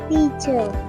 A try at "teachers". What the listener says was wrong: Teachers. Make sure we pronounce the S, okay?